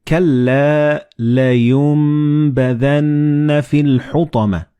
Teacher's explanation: the noon and ba, they will be assimilated together and you will pronounce them as meme